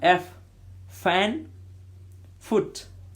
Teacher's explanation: Labio-dental, labio-dental, pronounced with lower lip and upper teeth. Lower lip और upper teeth का use होता है इसमें.